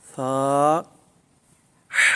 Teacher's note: اس پر سیٹی کی آواز جو ہے نا بالکل پیدا نہیں کرنی۔ بعض لوگ یہاں پر سیٹی کی آواز پیدا کرتے ہیں تو وہ سین بن جائے گا، تو حرف سے حرف بدل جائے گا۔